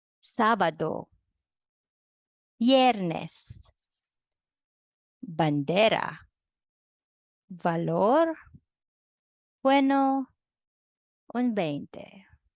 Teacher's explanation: They have little or no difference in sound. They are pronounced like a soft English B.